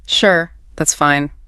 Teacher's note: You inserted a hard physical pause after the word sure and you really dragged out the vowel sound in fine. It sounded so heavy. · Notice how the pitch of my voice dropped at the very end, too. · It went into what we call vocal fry. That low grally sound. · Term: drop in pitch, heavy sigh